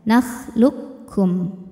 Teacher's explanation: Jadi kita langsung membunyikan seperti kaf tasydid biasa aja. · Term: idgham mutaqaribain yang kamil